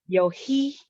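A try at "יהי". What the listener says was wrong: Not yo.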